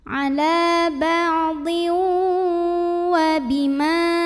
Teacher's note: tanwin kasrah yang bertemu dengan huruf waw. Maka tanwinnya masuk ke waw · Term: idgham bi gunnah